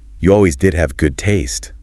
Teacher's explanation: disappointment they give the example you always did have good taste with the stress on did for emphasis